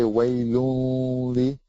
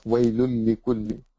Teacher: You don't say waylunli. You just join the lam with the lam, and you have no gunna.